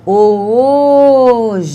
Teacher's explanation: Qual foi a sílaba que eu fiquei mais tempo pronunciando? O O. Por isso, essa é a sílaba forte. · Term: sílaba tônica